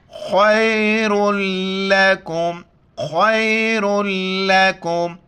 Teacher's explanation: خیر لکم خا کو موٹا کر کے یا کے ساتھ ملائیں گے. را کے اوپر جو تنوین ہے دو پیش ہے لام کے ساتھ ملائیں گے.